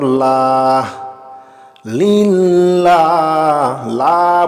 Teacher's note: লা বলে আমি এখানে এক আলিফ টান দিয়েছি